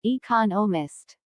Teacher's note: there are four syllables in economist with the stress on the second syllable